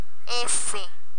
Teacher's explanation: se produce al acercarse la punta de la lengua a los alveolares